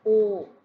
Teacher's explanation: it can be open rounded as in o.